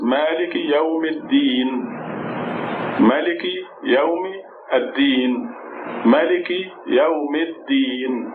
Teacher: The alif and the lam are very often silent when you connect, say all the words together.